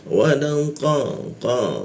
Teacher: Lidahnya kita naikkan sehingga tidak ada hembusan udara ketika membaca qo